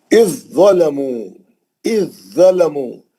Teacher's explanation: زال ساکن ہے لیکن زوئے میں چلے جانا، زوئے متحرک ہے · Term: ادغام متجانسین